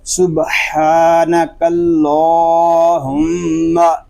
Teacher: ہا میم پیش ہم، میم شدد ہے، اس میں غنہ کریں گے